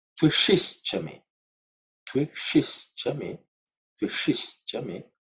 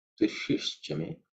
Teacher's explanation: the shi is the third, cerebral sha. So the tongue, tip of the tongue should be pointing upwards.